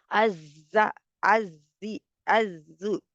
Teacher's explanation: आवाज को चला रहे हैं और हवा को चल रहे हैं, बजिंग साउंड लाएंगे इसमें